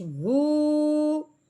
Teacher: वाऊ साकिन से पहले पेश हो तो उसको एक अलिफ के बराबर लंबा करते हैं